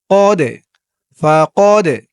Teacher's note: সাকিন এক আলিফ টান রসুলা রসুলা মাইতির রাসুল ফাকদ ফা কদ এই দালটা কলকলার হরফ ধাক্কা দিয়ে পড়তে হবে